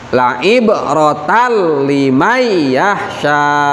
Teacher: Tapi idghamnya idgham bila guna, tidak memakai guna. Jadi ditasdidkan tapi dilangsungkan. Jangan dibaca la ibaratal.